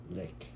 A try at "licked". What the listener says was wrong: Licked. You always forget that last sound.